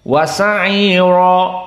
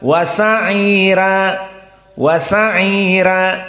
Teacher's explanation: maka ra-nya tidak dibaca mufakhamah seperti jumhur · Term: tarkik